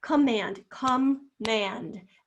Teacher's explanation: that is not a short o sound that is a sneaky little schwa